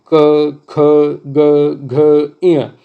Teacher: इनकी ध्वनि जो निकलती है वो कहाँ से निकलती है, कंठ से। तो क वर्ग जितना भी है वो पूरा कंठ होता है।